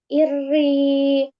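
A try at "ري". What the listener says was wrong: ya masih tebal ya. Nah, kalau gini berarti naik pangkal lidahnya. Nah, tebal jadinya ya. Iri ini naik. Tipis.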